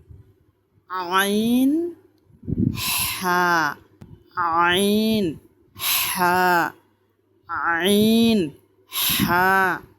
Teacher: দুই নাম্বার মাখরাজ হলকের মধ্যখান হইতে আইন হা